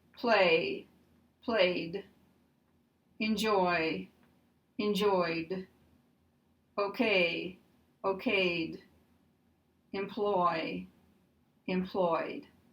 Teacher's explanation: If we have a vowel and a Y, there is no change. But we still have the D sound because the vowel ends voiced. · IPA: [ d ]